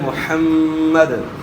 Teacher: کو صحیح ادا کرنا ہے، یعنی محمد نہ ہو جائے، محمد، حا کو اپنے مخرج سے ادا کرنا ہے، یعنی گلے کے درمیان سے ، اور میم مشدد میں غنہ ہوگا، اور وقف کریں گے